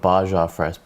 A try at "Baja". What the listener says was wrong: Yeah, because in Mexican, no, it's not a silent J. J pronounces a H, man.